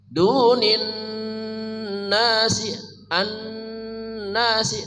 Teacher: nunnya wajib dengung sempurna gunnahnya ya. Nun musyaddadah tajibul gunnah, nun bertasydid wajib dibaca dengung, atau alif lam syamsiyah ma'al gunnah.